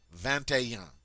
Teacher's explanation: we do get to make the liaison with the T of 20 and the ET